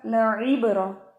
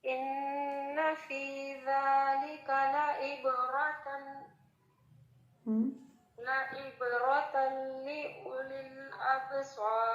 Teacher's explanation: لعبرہ عین زیر عی، اور عبرہ را کو آپ نے ہیوی کرنا ہے